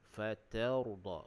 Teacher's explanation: Kemudian rabbuka fatarda, huruf ra di situ kita baca dengan tebal, fatarda. Huruf ta tu nipis, huruf ra tu dibaca dengan tebal. Kemudian kita waqaf dengan kadar 2 harakat.